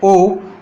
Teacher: जब अपन ओ की ध्वनि बोलते हैं ओ, तब अपने होठ क्या होते हैं? गोल हो जाते हैं। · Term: कंठोष्ठ